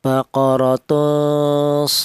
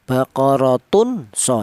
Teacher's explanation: Ini tanwinnya ini disamarkan ya, dibaca samar. Jadi apabila ada tanwin berjumpa dengan huruf shad ini, maka huruf tanwin ini disamarkan atau tanwin ini dibaca ikhfa